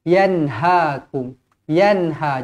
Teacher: Nun yang bertanda matizhar halqi dibaca jelas dan terang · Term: izharu halqi